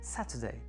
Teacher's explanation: accent sur l'avant-avant-dernière, qui est donc la première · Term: antépénultième